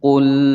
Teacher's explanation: Qul dibaca jelas, tidak boleh dipantulkan. Tidak boleh membaca qul karena lam bukan huruf qalqalah.